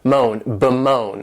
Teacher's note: bemoan, and this verb has 2 syllables and the stress is on that second syllable